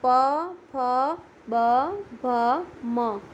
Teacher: જે વર્ણોનું ઉચ્ચારણ કરવા માટે હોઠનો ઉપયોગ થાય તે વર્ણોને ઓષ્ઠ્ય વર્ણો કહે છે